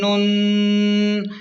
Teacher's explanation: یہاں پر نون مشدد ہے تو اسے غنہ سے پڑھیں